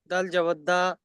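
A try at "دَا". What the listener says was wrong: দাল, দাল দাল পড়বেন না। দাল 1 নম্বর তাকিতে আমরা পড়েছি, দাল 3 আলিফ টান দিয়ে পড়েছি। তো এরকম এখানেও 3 আলিফ টান দিয়ে পড়তে হবে। দাল জবর দা।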